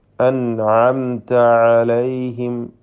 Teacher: തൊണ്ടയുടെ മധ്യം എന്ന മഖ്റജിൽ നിന്നാണ് ഐനും ഹഉം ഉച്ചരിക്കപ്പെടുന്നത്. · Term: ഐൻ